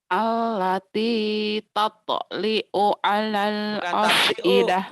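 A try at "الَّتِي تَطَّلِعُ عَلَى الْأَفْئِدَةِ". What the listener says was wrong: Tat dibaca nyamber double. Dibaca double. Tatoliu, bukan tatliu. Tatoliu.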